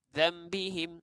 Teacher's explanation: Bila kita sebut za yang mana depan dia nun mati, nak sebut ba, daripada nun mati nak sebut ba, kita seakan-akan nak sebut mim. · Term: iklaq